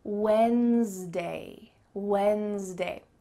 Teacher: There's almost a Z sound in the middle of this word.